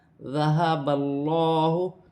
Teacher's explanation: اللہ کی لام سے پہلے زبر آ رہی ہے تو اللہ کی لام موٹی پڑھی جائے گی اور کھڑی زبر بھی ایک الف کی مقدار کھینچ کر پڑھا جائے گا۔